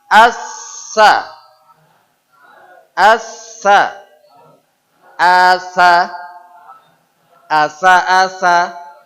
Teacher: Nah, sekarang lidah kita turunkan, ujung ketemu ujung. Jadi ujung lidah menjumpai ujung gigi seri atas. Gigi seri atas itu 2 gigi yang tengah.